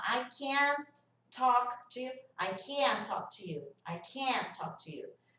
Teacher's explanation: Então, as negativas, quando elas estão no meio de uma sentença, o T vai sumir o som.